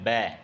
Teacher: सघोष में ध्वनियों के उच्चारण में स्वर तंत्रियों में कंपन होती है